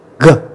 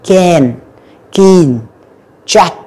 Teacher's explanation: Âm g là âm rung các bạn. K, không có rung nha các bạn.